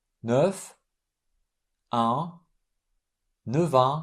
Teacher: F is pronounced V